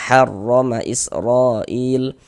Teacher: Mad wajib muttasil panjangnya 4 sampai dengan 5 harokat.